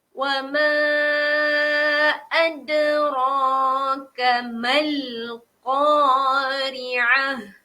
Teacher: Ra kena panjang sebab di sini ada huruf mad. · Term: huruf mad alif